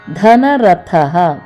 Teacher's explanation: ದ ಮಹಾಪ್ರಾಣ ಥ ಮಹಾಪ್ರಾಣ ಮತ್ತು ವಿಸರ್ಗ